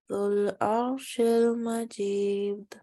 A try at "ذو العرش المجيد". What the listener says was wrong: Alhamdulillah, I noticed like when I was reading three words, Alhamdulillah, you were able to read three words all together.